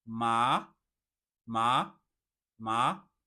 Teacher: The next one we have a rising tone or the second tone. You can see it starts from like a level of three and it rises to level five.